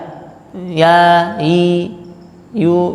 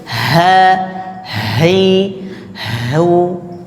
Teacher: harusnya kalau ha itu kan pangkal tenggorokan kemudian ada angin